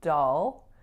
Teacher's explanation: make sure the first letter O is becoming a low back aa vowel